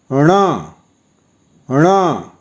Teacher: जिसके उच्चारण के लिए मूर्धा के साथ-साथ नासिका का भी प्रयोग होता है